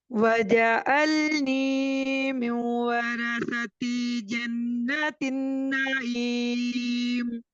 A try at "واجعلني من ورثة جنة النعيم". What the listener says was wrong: वजा नहीं है, जिम के ऊपर आपने जबर को नहीं पढ़ना। वजअलनी मिन वरसती जन्नतिन नईम।